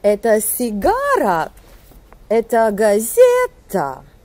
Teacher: On commence plutôt au niveau neutre et par la suite, sur la syllabe accentuée du mot qui exprime notre objet d'interrogation, la voix monte brusquement